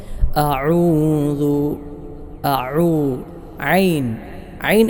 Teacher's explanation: ഐൻ എന്ന് പറയുന്ന ഹർഫ് തൊണ്ടയുടെ മധ്യഭാഗത്തിൽ നിന്നാണല്ലോ അതിനാൽ ഒരല്പം പ്രയാസം ഉണ്ടാകും ഹംസക്ക് ശേഷം ഐൻ വരുമ്പോൾ പക്ഷേ ഒന്ന് പ്രാക്ടീസ്